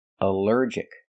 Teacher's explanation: Here the ALL is not pronounced all, but pronounced like in cup and up, because it's not stressed.